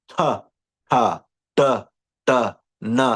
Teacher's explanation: it's called retroflex, when the tongue kind of whips towards the teeth